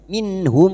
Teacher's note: Minh nun sukun bertemu ha idhar halqi. Nun sukun dibaca jelas tanpa mendengung.